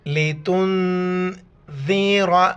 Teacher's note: دال کے وقت ہم باہر نکالیں گے اور را کو موٹا کر کے پڑھیں گے